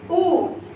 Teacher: जब आप उ बोलते हैं तो आपकी जीभ का पिछला हिस्सा हिलता है। तो आपके जहां पर जीभ का पिछला हिस्सा काम करे वहां पर कौन सा होगा, पश्च स्वर।